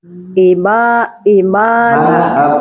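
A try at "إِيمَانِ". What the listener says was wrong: Panjangnya coba i panjang ma.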